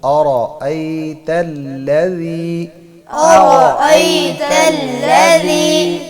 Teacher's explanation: را کو موٹا پڑھیں گے، حمزہ کو تحقیق کے ساتھ پڑھیں گے